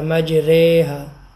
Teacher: امالہ اس کلمے کی راہ کو باریک پڑھتے ہوئے سویرے، قطرے، سارے کی راہ کی طرح پڑھیں گے